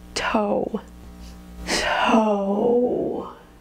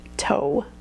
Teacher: There's a w at the end that you can hear pretty clearly